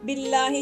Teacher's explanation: अल्लाह के नाम से पहले जेर है तो इसको बारीक ही रखेंगे, मोटा नहीं पढ़ेंगे